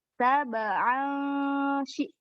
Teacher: Sab'an shidada. Nah, kalau ini tanwin bertemu huruf shin itu ikhfa. Jadi bunyinya disamarkan.